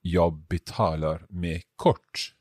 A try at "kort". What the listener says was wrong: Bra, but it's a more O sound, kort. we have several O sounds in Swedish.